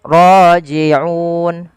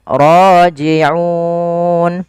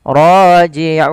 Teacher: Mat arid disukun kita boleh baca 2, 4 ataupun 6 harokat.